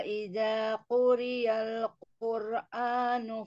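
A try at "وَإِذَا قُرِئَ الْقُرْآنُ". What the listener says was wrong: Mungkin di ini di quri'a ya, bukan ya. Wa idza quri'al.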